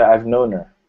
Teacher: the h sound should be like dropped